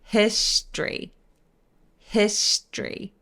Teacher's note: 중간에 오 발음을 삭제해서 str을 한 번에 엮어서 소리를 내주세요